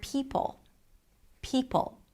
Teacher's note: the high E and the aspirated sound at the beginning, P, is compromised. So you're not fully exploring the vowel at the beginning.